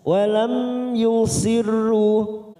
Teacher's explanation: mim sukun bertemu ya Idhar syafawi kita baca jelas · masuk pada huruf ro yang bertasdid, kita baca tarkik.